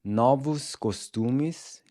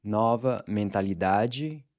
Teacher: One thing to note here is that “**NO-vos**” and “**NO**-**va**” are pronounced with an open O, as in the “awe” in “BOS-ton”